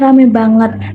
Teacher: foname ai pada kata ramai berubah menjadi vokal tunggal. E perbaikan kalimat dari nah itu tempatnya ramai banget diperbaiki menjadi Nah. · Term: peluluhan fonem vokal